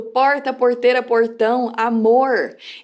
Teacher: ele é chamado de retroflexo ou retrógrado porque a ponta da sua língua ela aponta para trás